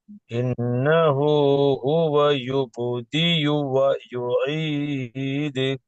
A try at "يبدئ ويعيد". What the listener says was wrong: يبدئ அல்ல அந்த யூ அந்த ஊ சவுண்ட் வரணும். يبدئ ويعيد. يبدئ ويعيد.